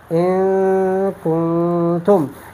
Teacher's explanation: here is a ghunna and the noon is being hidden. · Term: ikhfa